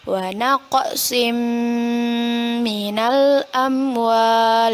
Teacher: kita baca dengan memasukkan bacaan tanwin kepada huruf mim dan ditahan dua harkat serta didengungkan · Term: Idgham Bighunnah